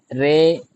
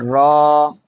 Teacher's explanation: را کے اوپر زبر ہے تو را کو پر پڑھیں گے، یعنی موٹا پڑھیں گے، را، را۔ رے نہیں پڑھیں گے، رے نہیں پڑھیں گے بلکہ را۔